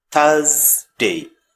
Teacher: In British pronunciation, R is silent, and put your tongue in between your teeth to make the sound Thursday.